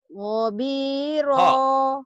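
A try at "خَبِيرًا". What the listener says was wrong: Kho, kho bukan go. Kho, kho bukan go.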